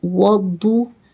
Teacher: Dwat always pronounced with thicker voice its mustaliya letter.